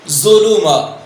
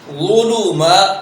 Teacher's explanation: بغیر سیٹی کے اور پر پڑھا جائے گا